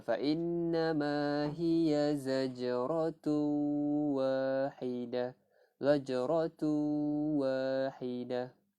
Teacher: Hukumnya adalah idgham bi gunnah, memasukkan masa terdengung.